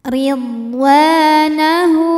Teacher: maka huruf waw ini kita panjangkan 2 harokat saja. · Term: mad tabi'i zahiri